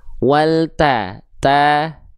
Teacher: Tipiskan pelafalannya, jangan sampai to.